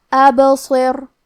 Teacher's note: کلمت ابصر میں حرف الباء پہ جزم ہے لہذا ہمیں با کو قلقلہ سے پڑھنا ہے، اور قلقلہ کا معنی ہے حرف ساکن کو ہلانا، تو ہم با کو ہلاتے ہوئے یہ کلمہ کو پڑھیں گے۔ · حرف الصاد حروف تفخیم میں سے ہے، لہذا ہمیں یہ حرف کو بھاری آواز میں پڑھنا ہے